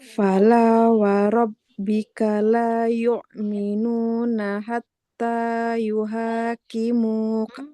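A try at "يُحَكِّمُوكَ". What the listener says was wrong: Jangan yuha. Dia nggak yuhakimuk. Karena dia bukan haknya yang panjang, tapi di depannya ada huruf bertasyid.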